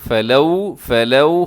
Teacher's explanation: آگے دیکھیے گا فلولا فضل اللہ علیکم، فلولا، فلولا، اسے فلولا نہیں پڑھنا آپ نے، فلو، فلو ہونٹ گول ہو جائیں گے تو یہ لفظ بہت اچھا ہو جائے گا